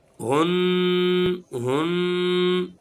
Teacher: गुन्ना एक अलिफ के बराबर नाक में आवाज़ को ठहराएंगे